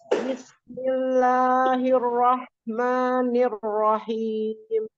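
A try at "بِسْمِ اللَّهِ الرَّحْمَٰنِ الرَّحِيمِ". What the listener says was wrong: Nah, ro tasdidnya ditahan dulu. Bismillahirrahmanirrahim. Jadi itu kan tasdid ro-nya. Tasdid itu adalah 2 huruf. Ya, jadi ada 2 ro di situ. Ro pertama sukun, ro keduanya berharokat.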